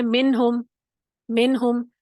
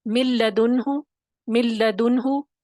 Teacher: بغیر غنہ کے ادا کریں گے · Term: غنہ کے بغیر